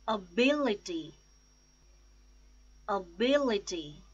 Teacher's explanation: The stress is on second syllable, bill, ability.